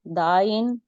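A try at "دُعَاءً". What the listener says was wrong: دعا نہیں دعا پیش کے ساتھ ہے.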